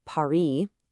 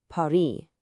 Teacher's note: In French, you often just ignore the last consonant. It's there in the spelling, but it's silent. So, a word like Paris isn't Paris, it's Paris.